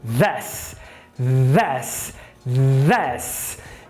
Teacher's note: Faz o Z com a língua para fora. Pronto! Chegamos na interdental vozeada.